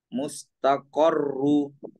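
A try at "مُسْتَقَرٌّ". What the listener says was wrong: dihidupkan saja tanwinnya mustaqorun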